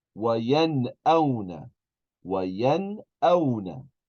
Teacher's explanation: if we have noon sakina, a noon with a sukoon, and then a hamza, then we're going to pronounce the noon normally. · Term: izhar